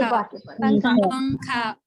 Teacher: तनवीन या नून साकिन के बाद हुरूफ इख्फा आवे तो नून की आवाज को नाक में छुपाकर पढ़ना चाहिए, नोके ज़बान तालु से हटाकर, जैसे उर्दू में पंखा के नून को पढ़ते हैं। · नून की आवाज नाक में चलेगी